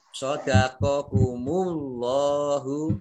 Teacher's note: shadaqakumullahu, Allahnya dibaca tebal karena huruf harokah di depannya dhammah ya